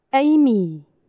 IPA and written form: ˈeɪmi (Amy)